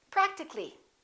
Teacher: some more words like that practical practical we don't say practically we drop the a and we say practically